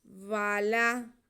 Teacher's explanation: واو پہ زبر لام پہ زبر، دونوں کو بالکل بھی نہیں کھینچنا۔